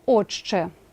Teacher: на ц і слово отче пишемо а вимовляємо отчче тому що шиплячий ч впливає на т і ти також перетворюється на шиплячий